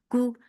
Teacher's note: Kaf is light for dhamma circle lips. The sound is short.